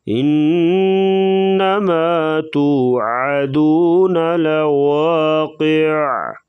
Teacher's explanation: انما نون اور میم کے اوپر شد ہوگی تو ہمیشہ غنہ کریں گے